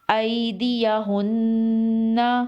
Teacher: حمزہ یا زبر ای، دال زیر دی، ایدی، یا زبر یا، ایدیا، ہا نون پیش ہن، ایدیہن، نون زبرنا، ایدیہن، وقف، ایدیہن، نون مشدد ہے، یہاں پر غنہ کریں گے اور وقف کی صورت میں بھی غنہ ہوگا۔